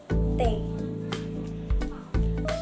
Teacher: bunyi t terjadi karena kerja sama artikulator aktif dan ujung lidah dengan artikulator pasif dan gigi bagian atas